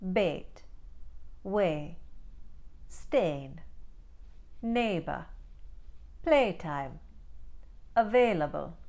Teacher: what happens in an Indian accent is they lop off the second part and they just pronounce that first part.